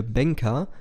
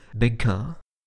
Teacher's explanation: Hier ist der Mund verschlossen, die Luft kann aber durch die Nase entweichen. So wird der wohlbetuchte „Bänker“ mit zugehaltener Nase zum ehrlich arbeitenden „Bäcker“. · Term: Nasale